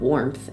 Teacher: An English example would be how the word warmth is pronounced with an added P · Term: appenthesis, epenthesis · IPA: [woɹmpθ]